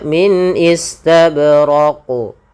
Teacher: Ya, bukan raq, jangan menambahkan hamzah. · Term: qalqalahnya